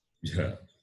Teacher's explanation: Mahaprana and palatal. Aspirate and palatal.